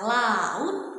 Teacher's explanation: Bunyi ini ya, dia aliran udaranya ya, lateral itu dia keluar nih melalui sisi ya, melalui kedua sisi lidah ya. Oleh karena itulah itu disebut sebagai bunyi lateral.